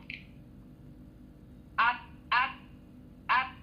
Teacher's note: Huruf dhad dia tidak dia bukan sifat angin yang hamas, dia bukan sifat angin yang mengalir, bukan. Huruf dhad dia tidak ada angin ya.